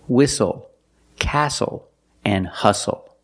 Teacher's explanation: a spelling pattern s-t-l-e like these words whistle castle and hustle the t is silent with the spelling pattern s-t-l-e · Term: silent T